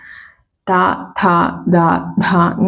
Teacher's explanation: ദന്ത്യം എന്ന് പറയും അതായത് പല്ല് പല്ലിന്റെ മുകളിൽ തട്ടുന്നുണ്ട് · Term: ദന്ത്യ ശബ്ദങ്ങളാണ്